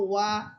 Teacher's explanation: ওয়াও হরফের মাখরাজ ছিল ঠোঁট গোল করে দুই ঠোঁটের শূন্য স্থান যেটা আছে দুই ঠোঁটের মাঝখানে যে শূন্য জায়গা ওই শূন্য জায়গা থেকে উচ্চারণ হবে